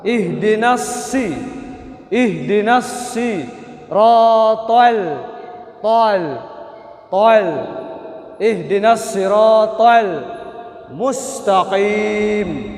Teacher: Ihdinas baik, ini huruf tipis bertemu dengan huruf tebal. Jadi disenyumkan dulu, ihdina, baru ditebalkan.